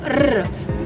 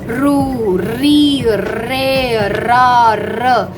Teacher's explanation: when it comes to R sound, r, for which the tongue has to roll.